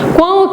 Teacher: o tritongo nasal porque o som sai pelas fossas nasais, pelas cavidades nasais, pelo nariz no caso. Por isso que ele é um tritongo nasal.